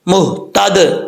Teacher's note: فہو المہتد، میم کے بعد ہا ہے، مہتد، دال ساکن ہے، اس کو پڑھتے ہوئے قلقلہ بھی ہوگا